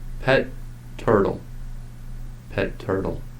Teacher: In the phrase pet turtle, the ta is stopped, held for extra time, and then released. This method of stop, hold, release signals the pronunciation of both sounds.